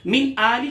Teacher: ठीक है जनाब। मिन आली के नून साकिन के बाद हमजा जो कि हुरूफ हल्के में से, लिहाजा यहां गुन्ना नहीं किया जाएगा, इजहार किया जाएगा